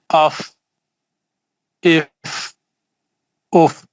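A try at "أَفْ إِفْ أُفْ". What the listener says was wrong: لمبا لمبا لمبا کریے نا. یہ دیکھیے اف اف اف ایسا.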